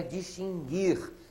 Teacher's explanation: a pronúncia é distinguir sem pronunciar a letra U